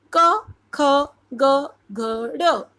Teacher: क वर्ग जो है वो कंठ से निकलता है, उच्चारण स्थान उसका कंठ होता है। कंठ मतलब गला।